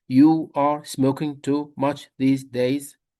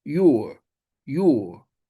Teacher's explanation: We normally don't say, you are. Instead, we link words together, saying, your. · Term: connected speech